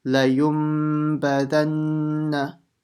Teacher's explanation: And make sure you don't stretch anything. The only sound that you're making is the nasal sound from the nose for the mim.